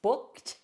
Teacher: Look at that ED at the end has a T sound.